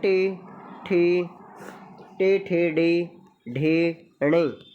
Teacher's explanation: टे वर्ग में टे, ठे, टे, ठे, डे, ढे, णे, ठीक है, 5 ये इसमें आते हैं। और ये मूर्धा से, किधर से, मूर्धा से ये इनका उच्चारण होता है।